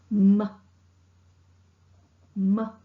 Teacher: This is a nasal consonant. M sound is articulated by closing the two lips and blocking the mouth. Air is not allowing to escape through the mouth. · The soft palate is lowered and the air escapes through the nasal passage. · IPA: /m/